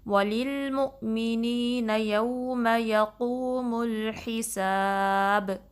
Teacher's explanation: قاف کو ہیوی پڑھنا ہے، ہا کو درمیانے حلق کے حصے سے نکالنا ہے اور با پہ آخر میں کلکلا کرنا ہے کیونکہ با پہ ہم نے وقف کیا، سٹاپ کیا ہے، تو پلٹنے کی آواز واپس آنی چاہیے۔